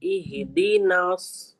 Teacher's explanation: پھر دینا اہدنا نہیں اہدینا اہدنا نون کو ہم نے سواد سے ملا رہے ہیں نا. دیکھیے سواد موٹا حرف ہے، اس کو موٹا کریں گے لیکن نون کو نہیں کریں گے